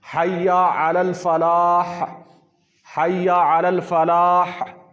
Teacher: اور اس میں ہا جو ہے نا، یہ ہا حلقی سے کہتے ہیں، موٹی ہا ہے، تو یہ حلق سے نکلتی ہے، تو اس میں اگر ہم وقف کریں گے تو اسے ہا کو بھی واضح کرنا ہے، اگر ہا واضح نہیں کریں گے تو پورا لفظ ہی بگڑ جائے گا۔